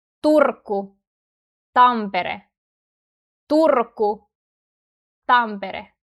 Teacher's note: In the word Turku, R sounds stronger than in Tampere, right? Well, the thing is that in consonant clusters, meaning when we have more consonants together or around or after the letter R, R tends to sound stronger than if it's between vowels.